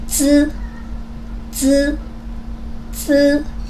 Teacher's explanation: So when you say 滋 there's no air comes out and the paper will not move.